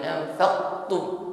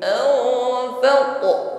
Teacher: huruf qaf sukun qalqalah, pantulkan bunyi huruf qaf, jangan ditahan